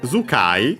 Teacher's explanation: we have the voicing of the tsu, because it's the second word part of the compound, and even more so since it's of strictly Japanese origin, and we have seen that it happens usually with those.